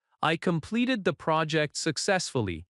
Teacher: use a confident falling tone. I completed the project successfully. The voice goes down at successfully. That falling tone signals certainty and control.